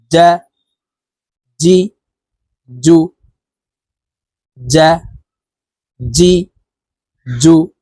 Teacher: জিহ্বার মধ্যখান থেকে এই জিম হরফের উচ্চারণ করব